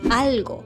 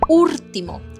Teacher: Instead of turning r into l, speakers turn l into r, a phenomenon known as rotacism. So, if you go there on a holiday and hear "argo" instead of "algo" or "urtimo" instead of "ultimo", now you know why.